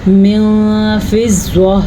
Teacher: نون ساکن کے بعد حروف اخفاء میں سے فا آیا ہوا ہے تو اس کو ہم اخفاء کے ساتھ پڑھیں گے اور نون ساکن کی آواز کو کسی حد تک چھپا کے پڑھیں گے